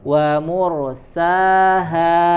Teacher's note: Wa mursaha, yang tebal hanya huruf ro, selainnya tipis